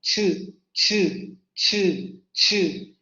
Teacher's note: Entre una oclusión y una fricación. Primero se cierran los órganos articulatorios para impedir la salida del aire y luego se va a liberar el aire, pero no como en las oclusivas, sino como en las fricativas. Es decir, se va a formar una pequeña abertura o se van a estrechar los órganos articulatorios para permitir la salida del aire fonador de manera continua, como en el caso de la che española, ch, ch, ch, ch. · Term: sonido africado